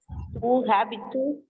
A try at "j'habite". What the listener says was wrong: The H is silent in French. So you don't have to pronounce H. H is not to be pronounced. So you have to say U habitu.